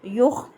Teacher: یخ آواز بند کرنی ہے، یہاں پہ قلقلہ نہیں